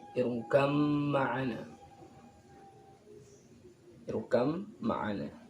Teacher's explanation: ba sukun harus diidghamkan pada mim. Jadi bunyi ba-nya hilang, langsung diganti pada mim. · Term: idgham mutajanisain